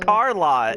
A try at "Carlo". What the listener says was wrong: Remember T? No, you don't ever say T's. T's are forbidden. Carlo.